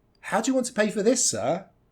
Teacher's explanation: here it's want pay this sir these are going to stand out